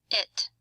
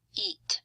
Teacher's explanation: I is a short vowel sound, and it's actually a short, fat blob of sound waves, versus E, which is a long vowel sound, and it's sort of a longer, thinner blob of sound waves.